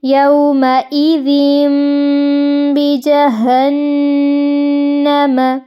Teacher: نون کی آواز کو میم میں بدل دیں گے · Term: اقلاب